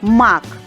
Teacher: перший звук м це твердий приголосний позначим синім квадратом мак другий з звук а Це голосний звук